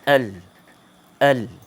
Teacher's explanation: Tepi hujung lidah mengena kepada, tekan kepada bahagian gusi gigi depan atas. Ni kalau gigi depan macam ni, maknanya belakang dia. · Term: huruf lam